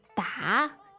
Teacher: And da, d a third tone, means to hit.